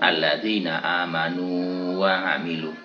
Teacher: Ya, maka dalam contoh itu tidak boleh diidghamkan, sehingga tetap dibaca alladzina amanu wa amilu. Wawu mati tidak boleh dimasukkan ke wawu, karena kalau diidghamkan maka menjadi hilang bacaan madnya.